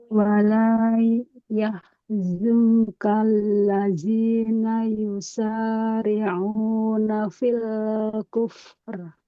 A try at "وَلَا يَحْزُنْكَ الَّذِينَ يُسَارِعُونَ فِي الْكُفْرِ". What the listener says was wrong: Fil kufur. Huruf ro-nya kita tebalkan. Boleh diulang Ibu.